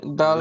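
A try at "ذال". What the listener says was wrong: জাল, জাল, ডাল নয় জাল, ডালের উপরে কোনো নক্তা হয় না, আর জালের উপরে এক নক্তা হয়। জাল, ডাল নয় জাল, জাল।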